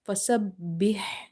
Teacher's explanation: This ha should be from the middle of the throat.